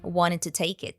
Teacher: The D from wanted is morphed into reduced ta, and then the K sound from take is linked to the following vowel